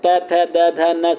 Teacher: दंत वर्ण के अंतर्गत आते हैं त थ द ध न, सभी क्या होते हैं, दंत वर्ण होते हैं। और इनको उच्चारण करते समय जो जीवा होती है वो दांतों से स्पर्श होती रहती है